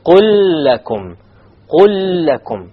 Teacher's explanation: There is a silent lam followed by a lam with a fatha on it. Therefore, there will be a full idgham here.